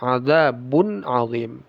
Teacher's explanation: Tanwin bertemu ain. Izhar. Izhar halqi. Dibaca jelas tanwinnya. Jangan ada gunah. Adzim d. Ya.